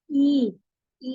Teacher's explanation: ठीक है, फिर उसके बाद अब आप जब आई पढ़ते हैं, सॉरी ई बोलते हैं, ई बोलने पर आप क्योंकि या का करीब करीब मखरज लेते हैं तो आपकी जबान, ये जो रेड कलर की लाइन आ रही है इस लाइन तक उठ जाती है। ई आपको महसूस होगा कि आपकी जबान का ये दरमियान का हिस्सा काफी ऊपर उठा है। ई बोलते हुए, आ बोलते हुए और ई बोलते में आपको महसूस होगा कि यहाँ पर आपको कुछ प्रेशर महसूस हो रहा है अपनी जबान के इस एरिया में।